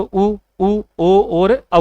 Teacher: वृत्ताकार का मतलब क्या होता है? जिसमें दोस्तों होठों का आकार क्या बन जाएगा? गोल बन जाएगा। · इनमें होठों का आकार क्या बन रहा है, गोल बन रहा है।